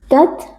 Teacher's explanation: huruf ta yang sukun kita baca dengan adanya sedikit aliran nafas ya, tapi tidak boleh berlebihan.